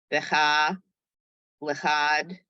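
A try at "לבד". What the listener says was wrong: look at the second letter. another one of those letters that are very similar looking.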